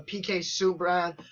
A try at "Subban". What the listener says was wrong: Yeah, you said Subran.